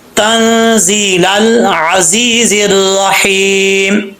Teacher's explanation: ता को बरीक पढ़ेंगे, दो नुक्तों वाला ता जो है वो बरीक पढ़ा जाता है